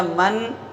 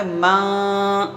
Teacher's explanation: زبان کو نون کے مخرج میں لگا کے روکنا نہیں ہوتا ہے، بلکہ زبان کو الگ رکھنا ہوتا ہے، راستے میں سمجھو ٹنگا ہوا سا معلق سا رکھنا ہوتا ہے۔ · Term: نون کا اخفا